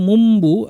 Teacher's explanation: নুন সাকিন তানবির পরে যদি বা আসে তাই নুনকে পরিবর্তন করে মিম বানিয়ে পড়তে হয় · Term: ইকলাব